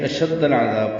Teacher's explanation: لمبا کریں گے اور با ساکن پہ قلقلہ ہوگا